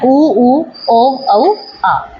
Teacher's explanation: पश्च स्वर वो है जो जीभ के पीछे वाले भाग से बोले जाते हैं।